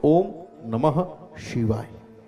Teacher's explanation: શિવાય જ્યારે બોલો ત્યારે જીભ અંદર વરવી જોઈએ, રોલ થવો જોઈએ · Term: મૂર્ધન્ય